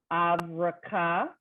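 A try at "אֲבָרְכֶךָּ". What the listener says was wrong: Don't forget your silent resh, which isn't silent. It just doesn't have a vowel. I mean, just doesn't have a vowel under it. So avar checha.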